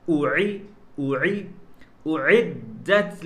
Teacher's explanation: حمزہ حلق کے پہلے والے حصے سے ادا ہوتا ہے، عین حلق کے بیچ والے حصے سے ادا ہوتا ہے